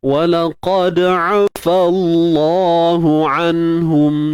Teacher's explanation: Walaqad afallah. Fallah, kalimah Allah kena tebalkan kerana sebelumnya baris atas.